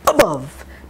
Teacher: two schwas one short one in the long syllable remember we can have short vowels in long syllables very tricky